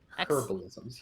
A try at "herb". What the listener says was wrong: We say herb because there's a fucking H in it.